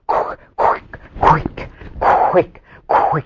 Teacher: It loses the voices. The w loses the voices. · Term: devoiced